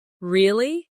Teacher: when they are surprised, their voice goes up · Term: intonation